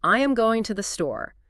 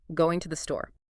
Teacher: So if you're struggling with speed, focus intensely on identifying and reducing those function words. You need to stop saying, I am going to the store, with 4 distinct, even beats, and start thinking in 2 rhythmic pulses.